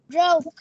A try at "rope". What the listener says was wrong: Pờ, phát âm âm đuôi là âm pờ. Rope.